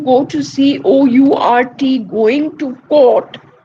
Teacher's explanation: Whether you say court or you say CAUGHT, the pronunciation of both these words is identical, right? Because you're making use of the long vowel O, right? It is O.